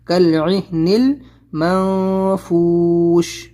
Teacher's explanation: यहाँ पर आपको इख्फा करना है, नून की आवाज़ को छुपाना है नाक में